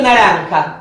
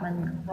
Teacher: un proceso que convierte a la consonante nasal en una nasal pronunciada en la zona velar de la boca